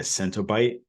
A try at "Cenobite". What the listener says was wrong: No T in there. Cenobite.